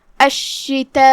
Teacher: مد واجب متصل میں ہم اپنی آواز 4 مد کے برابر لمبی کرتے ہیں